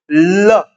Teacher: थोड़ी सी प्राणवायु वहां पे अवरोध के साथ रुकेगी और उसके बाद वो प्राणवायु बगल से निकल जाएगी, तो वो पार्श्विक कहलाएगा। देखो आप ल को बोल के देखो, ल, अगर आप इसको बोलोगे ना तो आपके जो जीवा है वो मुर्दा को स्पर्श करके हवा में अवरोध पैदा करेगी और उसके बाद ल का उच्चारण तब होगा जब बगल से हवा निकल जाएगी। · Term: पार्श्विक व्यंजन